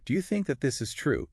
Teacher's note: You can hear how think that and that this and this is can sort of blend together slightly.